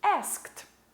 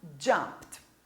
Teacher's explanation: termina com um voiceless sound, o som sem a vibração nas cordas vocais